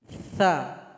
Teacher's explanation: Huruf berikutnya adalah huruf tha, di mana keluarnya dari ujung lidah tempelkan ke ujung gigi seri paling atas. Jadi posisi lidah seolah-olah seperti tergigit. Tha. Ada juga hamas atau angin yang mengalir, suara nafas yang mengalir.